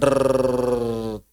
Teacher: huruf ro diucapkan dengan cara menyentuhkan makhraj sekali. Tek setelah tersentuh kemudian dijauhkan sedikit sambil digetarkan. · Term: konsonan getaran